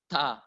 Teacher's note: Tak yang bundar itu sama dengan tak yang terbuka, mengeluarkan udara, makhrajnya ujung lidah menyentuh pangkal gigi seri atas